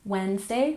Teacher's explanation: we don't say the D in Wednesday